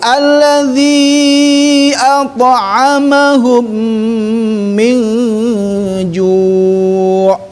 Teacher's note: At'amahum tahan karena mim bertemu sama mim idgham mim